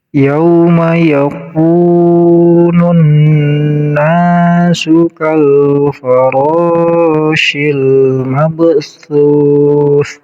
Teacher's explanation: Yaku panjang kafnya 2 harokat karena menjadi mad tabi'i. Huruf mad tabi'inya wawu, karena wawu sukun sebelumnya ada baris domah.